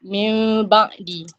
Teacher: bila nun mati jumpa ba ni dia jadi bunyi mim lah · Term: iklab